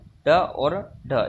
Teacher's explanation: तो हमारे मूर्धन्य से बोले जाने वाले व्यंजन हैं ड और ढ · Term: मूर्धन्य व्यंजन